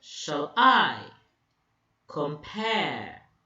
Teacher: Com is unstressed, pair is stressed.